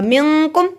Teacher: मिन पे गुन्ना होगा, कुम पे नहीं होगा